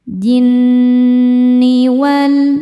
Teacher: Cara membacanya berdengung. Dengungannya tahan kurang lebih dua harakat. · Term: ghunah musyaddadah, gunnah musyaddadah